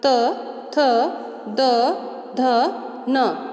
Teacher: तो हमारी जो जिह्वा है वो कहाँ से स्पर्श कर रही है? अपने दांतों से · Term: दंत्य